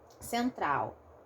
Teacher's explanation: A minha pronúncia transforma esse L aqui em um U. E como eu transformo em um U, acaba virando um encontro vocálico, acaba virando um ditongo, né?